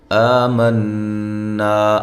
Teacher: آ الف مدہ کے قائم مقام ایک الف کے برابر لمبا کرنا ہے. نون مشدد پہ غنہ ضروری ہے اور الف مدہ ہے.